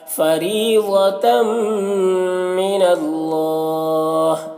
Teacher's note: फरी रॉ को बारीक पढ़ना है, यहाँ पर या मद्दा है। ज़ौद को पुर पढ़ना है, हुरूफ मुस्तालिया में से है और तम यहाँ पर इदगाम नाक़िस हो रहा है।